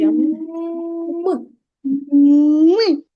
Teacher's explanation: цей звук вимовляється зі стиснутими губками що є перешкодою для виходу повітря з роту · звук м вимовляється зі стиснутими губами які потім різко розкриваються м м так цей звук вимовляється зі стиснутими губками що є